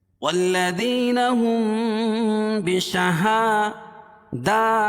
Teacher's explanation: والذین ہم بشہادہ، دونوں پر کھڑا زبر قائم مقام الف مدہ کے اس کو ایک الف کے برابر کھینچ کے پڑھیں گے